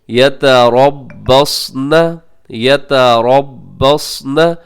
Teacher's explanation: اس میں را موٹا ہوگا اور اس کے بعد حرف صاد یہ بھی موٹا پڑھا جائے گا